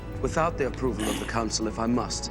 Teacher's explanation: And then in the second one, his ow vowel, talking about the council. Again, it's a very kind of grand pronunciation of this ow vowel that would be completely different in Scottish.